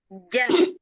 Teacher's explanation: kalau huruf jim itu, Ibu, seolah-olah tengah lidahnya itu neken ke depan.